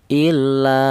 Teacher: dibaca mad tha thobi'i panjangnya satu alif atau dua harakat atau dua ketukan illa seperti itu.